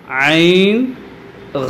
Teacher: ഐൻ ഇത് കുറച്ച് തൊണ്ടയുടെ താഴത്തു നിന്നാണ്